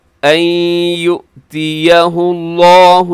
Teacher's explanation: لفظ اللہ موٹا ہے کیوں؟ اس سے پہلے ہا کے اوپر پیش ہے